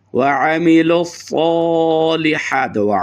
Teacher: आइन को स्वाद को पुर करेंगे और थोड़ा सा लॉन्ग और लंबा करेंगे।